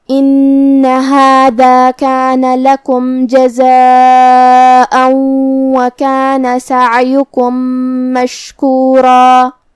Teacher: ہم حرف شین کو ظاہر کریں گے اور اسے زبان اور اوپر کے تالوں کے درمیان سے ادا کریں گے۔ آخری میں یہ کلمہ پہ رکیں گے تو اس پہ مد الف سے رکیں گے۔ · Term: شین ساکن